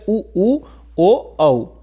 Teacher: अगर आप बोल के देखेंगे तो क्या होगा, वृत्त बन रहा होगा आपके होठों पर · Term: वृत्तमुखी